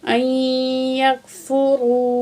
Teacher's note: वाव साकिन है, मा कबल पेश है, वाव मद है, 2 सेकंड वाव को खींच के पढ़ेंगे